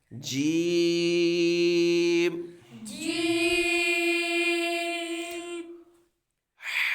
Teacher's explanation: جیم کو لمبا بھی کرنا ہے کیونکہ اس کے اوپر مد ہے، اور یہ حروف شاجریہ ہے، زبان کے درمیان اور تالو کے درمیان سے ادا ہوتا ہے